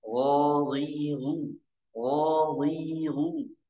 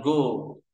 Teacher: huruf ghin makhrajnya terletak pada tenggorokan bagian atas atau ujung tenggorokan. Cara bacanya ghiru ghiru.